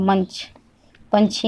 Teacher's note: च वर्ग के पहले वर्ण में हम लोग अगर अनुस्वार लगा देंगे तो यहाँ पे इया का उच्चारण होता है, ठीक है। जैसे यहाँ पे च है, च के पहले वर्ण है म, म के ऊपर हम लोग अनुस्वार लगा दिए तो उच्चारण किसका हो रहा है, इया का उच्चारण हो रहा है।